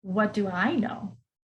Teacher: you hear that intonation rise at the end